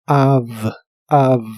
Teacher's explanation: Para que la identifiques mejor, la V en inglés suena como una F, pero vibrante. Así que esta palabra suena como av, av. · La palabra of realmente se pronuncia como una A y una V, la cual es labiodental y vibrante en inglés. Para que la identifiques mejor, la V en inglés suena como una F, pero vibrante.